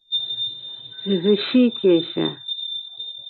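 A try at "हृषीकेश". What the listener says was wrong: Not Rishikesha. Rishikesha. Because that H is there, right? It's not R with the dot below only. Then it is Rishikesha. There's H also before that. So it's Rishikesha. Yeah, so it is Rishikesha.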